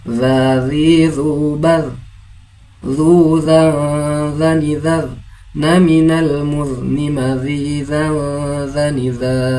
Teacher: makhrijul hurufnya berada pada ujung lidah dengan ujung gigi seri bagian atas dengan ujung lidah sedikit dikeluarkan. Dza tanpa desir ya. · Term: huruf dzal